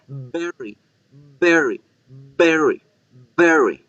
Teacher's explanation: producen es diferente la bebí labial se produce con ambos labios se genera una pequeña explosión porque el aire empuja a los labios para poder salir · con la V hay una fricción del aire entre los labios y los dientes, pero nunca hay una explosión.